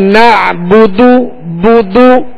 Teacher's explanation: بغیر کھینچے بغیر جھٹکا دیے معروف پڑھیں گے، ہونٹوں کو گول کر کے ادا کریں گے